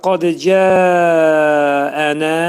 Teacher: Ənədə burda nə iki səs qədər qaldırılır. Çünki nun hərfindən sonra təbii mədli hərf gəlib. Əlif hərfi və ona görə iki səs qədər bunu qaldırırıq.